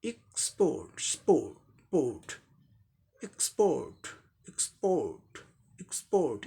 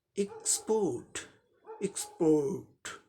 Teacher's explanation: आर silent होगा क्योंकि आर के बाद यहाँ तो कॉन्सोनेंट है टी है ना, ये वावल साउंड यहाँ नहीं है, तो ये आर साइलेंट होगा ब्रिटिश इंग्लिश प्रोनाउंसिएशन में